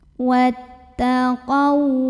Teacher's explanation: Jadi ini alifnya hamzah wasol ya, lewatin kalau di tengah. Wattaqau, qau huruf lin karena ada waw sukun yang didahului fathah, maka dibacanya dilunakan